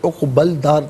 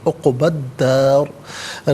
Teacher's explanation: عقبہ میں با پر زبر سے الداری کے دال کے ساتھ ملائیں گے، درمیان میں الف یعنی حمزہ کو حذف کیا جائے گا، اور یہاں پر دال حرف شمسیہ تو لام کی آواز نہیں بلکہ دال کی آواز ہوگی، عقبل دار نہیں، عقبت دار۔